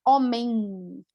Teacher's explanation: Homem também tem uma nasalização, usamos bastante o nariz